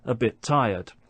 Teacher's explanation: we don't hear two separate consonant sounds. We just hear one.